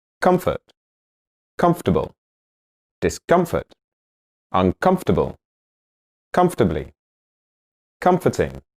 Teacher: In all these words, the stress is in the same place as the root word, comfort.